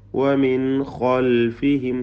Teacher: സാക്കിനാനൂൻ ഇൽഹാർ ഹൽഖി മണിക്കാതെ വെളിവാക്കുക